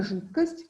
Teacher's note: в слове жидкость мы видим оглушение звука д